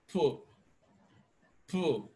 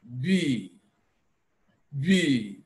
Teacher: Now, as you try to actually articulate that sound, I want you to place your finger on your Adam's apple as we articulate P and B, and we notice that one is voiced and the other is voiceless. Of course, when we articulate P, normally, we do not add voice to it.